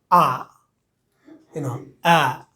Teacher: এ এবং ই একত্র হয়ে আ, আ, ঠিক আছে। তো আ সাউন্ডটা একটু লং সাউন্ড, দীর্ঘ সাউন্ড, এবং এ সাউন্ডের জন্যে আমরা যেমন মুখ প্রশস্ত করি বা খুলি, আ সাউন্ডের জন্য মুখটা একটু বেশি প্রশস্ত হবে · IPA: æ